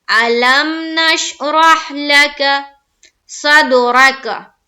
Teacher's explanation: लाम काफ दोनों के ऊपर जबर की हरकत है, जबर को जल्दी पढ़ें, थोड़ा भी ना खींचे